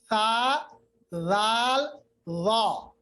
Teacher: زبان کی نوک کو یہ جو ثنایا علیا ہے نا اس کے کنارے کے ساتھ ملائیے. کنارہ یہ سامنے، تا لال وا.